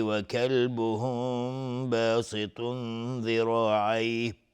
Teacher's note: میم ساکن بعدش با اخفای شفوی